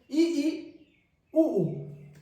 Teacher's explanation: जीभ की ऊंचाई सर्वाधिक रहती है इसमें और मुख संवृत्त यानी बंद हो जाता है। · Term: संवृत्त स्वर